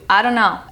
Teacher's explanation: The T sound is dropped with the word don't